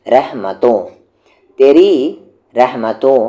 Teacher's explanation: نون غنہ، نون غنہ آواز ناک میں جائے گی